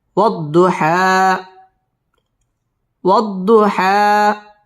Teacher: واو ضاد زبر وض ضاد পেশ দু وض হা খারা জবর হা والضحى ওয়াও ঠোঁট গোল করে উচ্চারণ করব ওয়াদ দত তাসদীদ ওয়ালা হরফ والضحى এক আলিফ টান দিয়ে ওয়াকফ করব